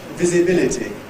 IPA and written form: ˌvɪzɪˈbɪlɪtɪ (visibility)